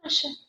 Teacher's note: Aqui eu tenho o A, que é uma vogal, que eu pronuncio ela com mais força, e o I, que fica mais apagado. Então, nesse caso, o A é uma vogal e o I é uma semivogal.